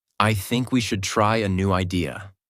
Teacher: Voice goes down at the end. This is called falling intonation.